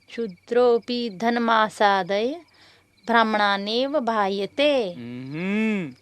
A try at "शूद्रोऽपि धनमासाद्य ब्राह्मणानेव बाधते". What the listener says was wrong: ब्राह्मणानेव बायते नहीं, ब्राह्मणानेव बाधते।